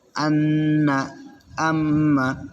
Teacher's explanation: নাকের বাঁশি হইতে গুন্না উচ্চারিত হয়